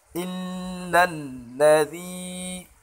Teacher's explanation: یا مدہ ہے، ایک الف برابر کھینچیں گے